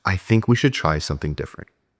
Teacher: It's called uptalk. Let your voice drop at the end. That downward tone signals authority.